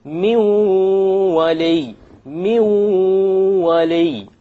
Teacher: we drop the noon because the waw is of the letters of idgham with ghunna